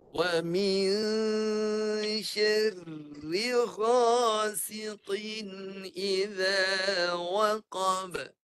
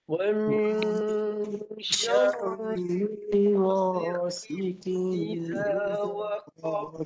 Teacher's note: Ada huruf ra yang berbaris bawah. Maka ra yang matinya dibaca nipis. Kedua-duanya baca nipis.